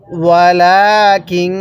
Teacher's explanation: নুনের মধ্যে একটু বেশি টান দিব